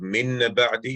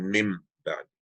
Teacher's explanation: The noon sakin or tanween turns into a meme. Instead of min ba'di, it becomes a mim ba'di. · the changing of noon sakina or the tanween when followed by a ba into a hidden meme with the observance of ghunna. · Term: Iqlab